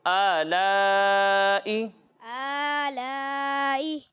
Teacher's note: یہاں کھڑا زبر ہے، اسے 1 الف کے برابر کھینچ کر پڑھنا ہے، اور یہاں مد متصل ہے، ٹھیک ہے، اسے 2 یا پھر 2.5 الف تک کھینچ کر پڑھنا ہے.